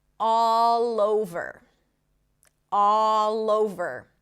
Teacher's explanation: the consonant of the first word becomes the beginning of the next word, right? It connects to the vowel in the next word.